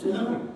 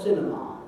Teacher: you could either say it ending with schwa or with R. And that's the word cinema.